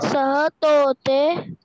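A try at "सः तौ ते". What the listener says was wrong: तोते नहीं, सह तोते नहीं, सह तऊ फिर ते, सह तऊ ते।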